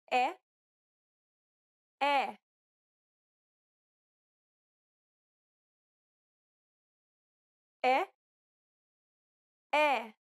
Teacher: This vowel sound is identical to the E in set. It's known as the open E sound in Portuguese.